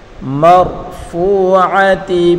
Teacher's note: فی صحف مکرمہ، فی صحف مکرمہ مرفوعۃ، را کو پر پڑھیں گے، میم کو را کے ساتھ ملا کر پڑھیں گے، اور را کو پر پڑھیں گے